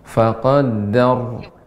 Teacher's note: dibaca dengan tebal Ibu, karena ra yang disukunkan karena waqaf, sebelumnya huruf yang berharakat fathah